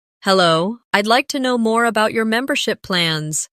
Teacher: Notice the stress on membership so it's clear what you're asking about.